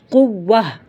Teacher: تو پھر قوتن سے پڑھتے ہیں، قوتن سے قوہ، حرکت بدل دیتے ہیں۔ تا ساکنہ کو ہا سے بدل دیتے ہیں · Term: وقف بالابدال